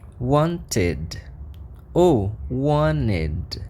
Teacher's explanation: E se eu estou dizendo que quando eu tenho esse som t no final, ele ganha o som id